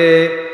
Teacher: এই আয়াতটা ধরেন ওয়ান ওয়াও গিয়া নুনকে ধরছে, এই মজার একটা পড়া, হ্যাঁ, ওয়াও গিয়া নুনকে ধরছে, নুনের উপরে তাসদিদ আছে, ওয়ার উপরে জবর আছে, এই জন্য এইটা হইল হরকতের পরে নুনের উপরে তাসদিদ। কি হরকতের পরে নুনের উপরে তাসদিদ আসার কারণে গুন্নাহ করিয়া পড়িতে হবে, ইহাকে ওয়াজিব গুন্না বলে।